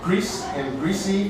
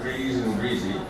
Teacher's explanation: Grease and greasy have S not Z.